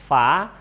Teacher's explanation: makhraj Va itu ada di bibir bagian bawah dalam ketemu dengan gigi atas